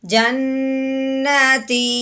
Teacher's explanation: آواز اس طرح نیچے کو لے کے آنی ہے کہ سننے والے کو یہ محسوس ہو جائے کہ یہاں پہ بات ایک دفعہ مکمل ہو چکی ہے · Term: وقف